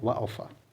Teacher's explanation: दंतोष्ठ में क्या आया, निचले ओर तथा ऊपरी दांत से उच्चारण। इसमें कौन कौन है, वा और फा।